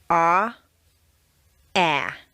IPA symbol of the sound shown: æ